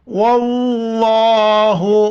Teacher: لفظ اللہ سے پہلے زبر ہو یا پیش ہو تو لفظ اللہ کو موٹا کر کے پڑھیں گے.